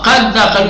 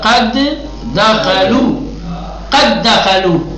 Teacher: ایک دال کو حذف کر دیا، ود ہو گیا، ہاں قد دخلوا، یہ سمجھ تھا قد دخلوا، قد دخلوا، ٹھیک ہے؟ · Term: ادغام